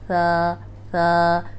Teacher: اگر آپ کو یہ یاد ہے کہ یہ سیٹی والا حرف نہیں ہے، نرم حروف ہے اور سیٹی کی آواز نہیں آنی، اوپر سامنے والے جو 2 دانت ہیں ان کے کنارے پہ زبان رکھ کے ادا کریں گے، ثا ثا، تو سیٹی کی آواز نہیں آئے گی۔